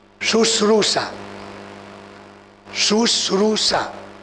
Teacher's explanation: શ્રુ ઉપર ભાર આવે છે એ તમે જુઓ.